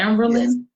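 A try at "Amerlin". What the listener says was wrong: Amberlin without the B.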